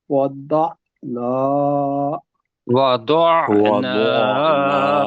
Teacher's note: نون النا کو 2 حرکات کے مطابق پڑھنا ہے